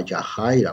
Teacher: Fíjense aquí en esta palabra Yajaira, bueno, también la H poniéndola como aspirada como J, que bueno, en español debería ser Yajaira.